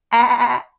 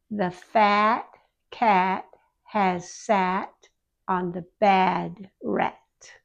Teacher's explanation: It's open more than the long a sound. And the front of the tongue is low and back of the tongue is raised a little. It sounds like that ugly a sound we talk about. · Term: short a sound